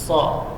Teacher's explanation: Ya, langsung ditasydidkan ke huruf shad, ala sa. Huruf shad ini huruf shafir kubra. Ujung lidah di ujung gigi seri bawah, ujung gigi seri atas bawahnya rapat.